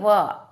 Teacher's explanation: दांत पर हम होठ को रखते हैं होठ पर हम दांत को रखते हैं यानी कि दंत और ओष दोनों से हम इसका उच्चारण करते हैं · वकारस्य यानी वकार का, यानी व व वर्ण का उच्चारण स्थान दंत और ओष्ठ दोनों है ना। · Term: दंतोष्ठ